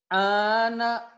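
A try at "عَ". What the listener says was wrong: Kurang. Kurang ngeden.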